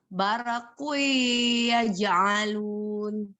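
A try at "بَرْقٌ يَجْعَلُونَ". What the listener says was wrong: Di ro sukunnya tadi ada tawalud Mbak, ada bare gitu. E-nya coba dihilang dengan ditahan Mbak.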